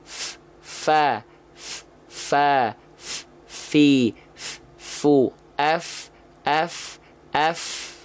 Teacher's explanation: ujung gigi seri atas menyentuh dengan badan atau perut bibir bawah · maka ketika dilafalkan pastikan Fa itu mengalir deras nafasnya · dalam yang basahnya Fa kalau teman-teman tepat melafalkannya seperti ini maka Fa punya sifat yaitu yang disebut dengan hams hams itu artinya mengalir nafas ya maka Fa itu harus mengalir nafas dengan deras karena dia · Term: huruf Fa